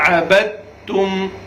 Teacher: با کو ہم نے تا کے ساتھ ملا دیا, بیچ میں دال جو ہے اس کو نہیں پڑھنا ہے, کیونکہ با کا تا میں ادغام ہو رہا ہے.